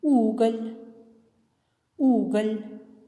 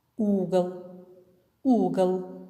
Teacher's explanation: заметили разницу в произношении слова в первом случае с мягким знаком в слове уголь звук л произносится мягко а во втором случае звук л произносится твёрдо